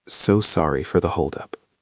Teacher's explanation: Use a downward intonation at the end. Not a question, a statement.